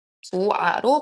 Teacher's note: 좋다의 어간 조에다가 모음으로 시작하는 어미 아가 결합될 때 저희는 발음을 히읗이 탈락된 형태 조아로 발음하게 됩니다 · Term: 히읗 탈락